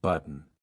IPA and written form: ˈbʌt.ən (Button)